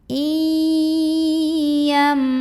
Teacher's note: nun sukunnya dileburkan ke huruf ya, dimasukkan ya, disertai dengungan. Jadi tidak sekedar i tapi tahan. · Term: idgham bi gunnah